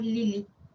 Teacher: La vocal I es una vocal alta anterior.